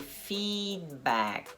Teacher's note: É um I longo, essezinho aqui, ó. Os 2 Es fazem um I longo